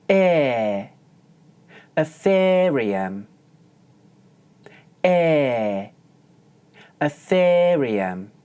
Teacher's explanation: when saying a word like Ethereum, you can pronounce the diphthong more like a long monophthong.